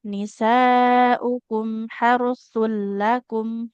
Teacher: huruf lam ini dia ditahannya jangan terlalu lama ya. Tidak harusakum kelamaan.